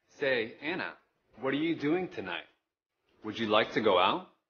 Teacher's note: chú ý đọc nhấn mạnh ở từ Anna, what, doing, tonight, like, và từ go out